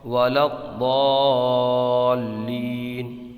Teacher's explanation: یہاں پر مد لین عارض ہوگا کیونکہ حروف لین کے بعد عارضی سکون ہے ، وقف کی وجہ سے حرف ساکن ہے۔ یا کھڑا زبر